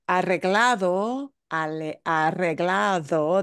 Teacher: that D should be like a TH. Mm-hmm. It's between two vowels.